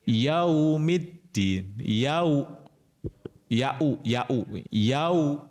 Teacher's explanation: bunyinya u yau bukan yao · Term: bacaan layinah